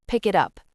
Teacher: The K at the end of pick connects to the I at the beginning of it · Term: Linking